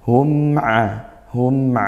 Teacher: Mim sukun bertemu ain dibaca izhar syafawi dibaca jelas maka kita sempurnakan sifat aslinya mim